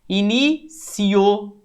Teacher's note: Ó o O mais forte, ditongo crescente.